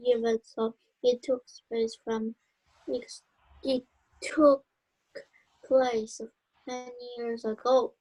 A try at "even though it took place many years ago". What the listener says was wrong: Can you say even though? You have to say though. Don't just say the, but because it sounds different. You must say though.